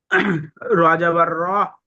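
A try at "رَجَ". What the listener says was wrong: জি, র জিম যাবার, জিমটা যুক্ত করুন, র জিম জাবার রজ। উম উম মিমের আওয়াজটা আসবে।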